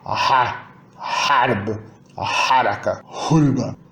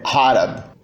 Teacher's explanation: Talvez as mais difíceis sejam, na verdade, a fricativa faringal, surda e sonora